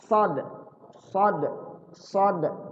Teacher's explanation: dia tempatnya sama dengan Sin cuman bedanya saat baca Shad itu tebal ditebalkan ya dan saat baca Shad itu mulut kita enggak monyong ya bibir